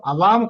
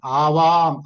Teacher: అంటే ఇప్పుడు అవాం కాదు ఫస్ట్ పాయింట్, ఆవాం. ఆకి దీర్ఘం ఆవాం.